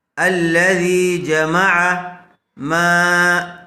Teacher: زبر والے حرف کے بعد الف مد آیا ہوا ہے، تھوڑا کھینچ کر پڑھیں گے